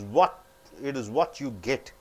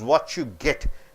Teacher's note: It is not what you, T plus Y, chew